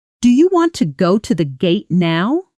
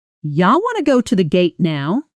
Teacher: The words do you collapse into something closer to yah